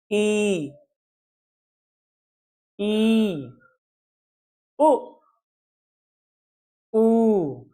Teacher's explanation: देखिए जैसे यहाँ पे लिखा है छोटी ई बड़ी छोटा ऊ बड़ा ऊ ऐसे लिखा है ना, तो इनको उच्चारण करने में हमारे मुख बंद से लगभग बंद जैसे होते हैं और जीभ ऊपर उठी होती है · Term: संवृत स्वर